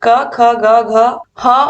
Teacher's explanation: तो अकुह विसर्जनीय नाम कंठ, यानी कि क ख ग घ ह और विसर्ग का उच्चारण स्थान जो होता है वो कंठ होता है